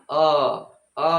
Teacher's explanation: बोलेंगे तो आधे से थोड़ा ज्यादा हमारा मुख खुलेगा